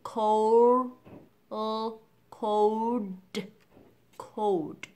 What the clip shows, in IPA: koʊld